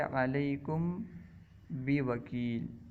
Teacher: میم ساکن کے بعد با آ جانے کی صورت میں میم ساکن کو اس کے مخرج میں چھپا کر ادا کرنا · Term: اخفاء شفوی